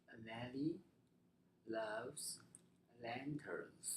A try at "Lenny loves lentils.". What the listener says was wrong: Getting better. Takes a little bit of practice, but it's getting better.